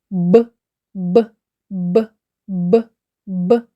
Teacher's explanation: наші губи спочатку при вимові зімкнені а потім розкриваються миттєвим виходом повітря губи утворюють перешкоду повітрю Отже звук Б приголосний звук Б нагадує стук барабану б б